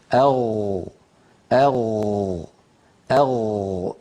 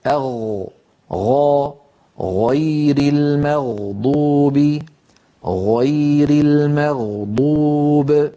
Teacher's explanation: ولاحظوا بأن المخرج لا ينقفل، لاحظوا بأن المخرج مفتوح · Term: الغين